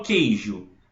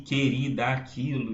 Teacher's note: eu não escuto esse U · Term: dígrafo